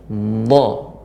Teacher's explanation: karena tepi lidah mengenai gigi geraham, maka dia lebih berat pengucapannya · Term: huruf dha